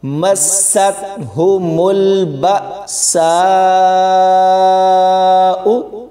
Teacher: یہ بڑی مد ہے، اس کو 4 سے 5 الف کی مقدار تک کھینچ کر پڑھیں گے ، یعنی 4 سے 5 سیکنڈ تک اس کو لمبا کر